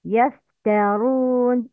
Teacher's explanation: Conceals the noon. Ra must be mufakhama, heavy tone.